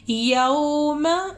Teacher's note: یو کو لمبا کرنا ہے، ماں کو لمبا نہیں کرنا، یوما، یوما نہیں کہنا، یو کو لمبا کرنا ہے.